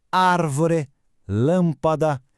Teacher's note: Nessas, a sílaba forte é a antipenúltima · E para fechar essa primeira parte, temos as proparoxítonas. Nessas, a sílaba forte é a antepenúltima. Ou seja, a terceira, contando do final para trás. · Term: propoxítonas